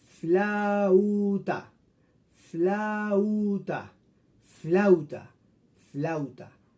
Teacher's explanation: aunque son 2 vocales unidas, el sonido de cada una de ellas no cambia, es el mismo. La A suena fla, la U suena flau, flauta. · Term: diptongo